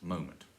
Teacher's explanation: it's moment so stress on the first syllable